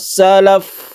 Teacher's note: Fa ini tidak boleh ditekan tapi dilepas. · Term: rokhawah